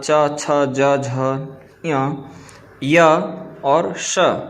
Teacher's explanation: तात्पर्य है ई चू य स तालुनी भवति, अर्थात ई च वर्ग अर्थात च, छ, ज, झ, य और श, इसका उच्चारण स्थान तालु होता है